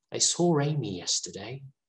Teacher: the first word ends in a vowel and then the second word starts with a vowel so they want to add a consonant sound